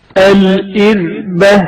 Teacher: حرف را نازک اور ہلکی آواز میں تلفظ کیا جاتا ہے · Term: ترقیق